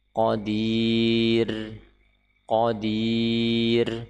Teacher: ketika kita wakaf di sini maka ra dibaca tipis, qadir, karena sebelumnya huruf yang sukun dan sebelumnya kasrah.